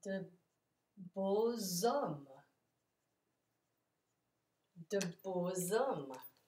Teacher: And we have the liaison that sounds like z.